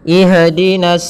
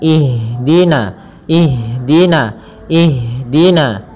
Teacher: sifat ham ham artinya mengalir nafas kita mengalirnya nafas kita maka jangan sampai huruf Ha ini memantul